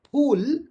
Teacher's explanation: Pool is a bilabial because you cannot say ph or p without touching both the lips. But to say fur, you don't have to touch both the lips.